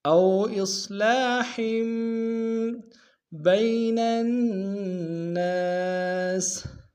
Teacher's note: ہا کے تنوین کو آگے جو چھوٹا سا میم ہے اس کے سامنے لائیں گے اور غنہ کریں گے